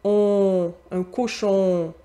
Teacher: le on a tendance à sonner plus fermé en Europe qu'au Québec. Nous, on l'ouvre un peu plus.